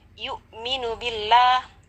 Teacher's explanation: Wala la mad tabi'i yu'minu billah, ada lafaz Allah di sana yang kita baca tarqiq ya, secara tarqiq atau tipis karena didahului oleh huruf yang berharakat kasrah.